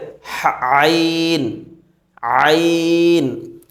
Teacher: আইন মাখরাজটি কোথায় হলকের মধ্যখান হইতে